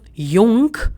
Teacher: So in case of jung, you hear only oo sound.